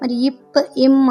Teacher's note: மேலுதடும் கீழ் உதடும் பொருந்துவதால் பிறக்கின்றன